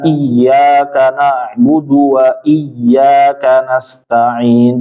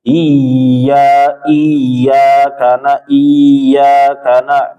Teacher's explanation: Tidak boleh ya bertasydid itu dia enggak ditahan, cuma ditekan doang